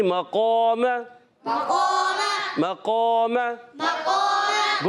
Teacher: حرف مستعلیہ کے بعد الف آ گیا تو وہ الف کو بھی موٹا پڑھیں گے، الف کو بھی موٹا پڑھیں گے، الف کو بھی موٹا پڑھیں گے.